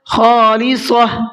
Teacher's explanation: خا کو بھی حلق سے نکالنا ہے اور منہ بھر کے پڑھنا ہے، اور صاد کو بھی منہ بھر کے پڑھنا ہے۔